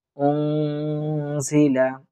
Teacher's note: এখানে আমরা ইকফা গুণ্য করার চেষ্টা করব